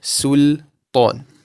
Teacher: Make sure that you give the lam its due diligence of being tarqiq, empty, and then you only lift up the back of your tongue to pronounce the ta with a full mouth.